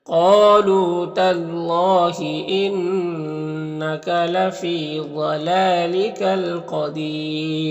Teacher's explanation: قالوا قاف حروف مستعلیہ میں سے، اور یہاں پر الف مدہ ہے، لو میں واو مدہ ہے، یہاں پر اللہ کلام سے پہلے تا کے اوپر زبر ہے، تو اللہ کلام کو پر پڑھیں گے